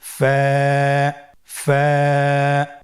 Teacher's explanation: ফায়ের মাখরাজ হলো নিচের ঠোঁটের প্যাড সামনের উপরের দুই দাঁতের আগার সঙ্গে লাগিয়ে উচ্চারিত হয়। · ফা হরফটি উচ্চারণের ক্ষেত্রে বারিক হবে এবং এক আলিফ টেনে পড়তে হবে।